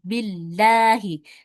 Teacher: cara bacanya dengan tarqiq atau tipis, itu ketika lafaz Allah, huruf sebelumnya adalah huruf yang berharokat kasroh.